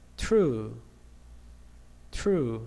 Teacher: You can feel the explosion of T sound.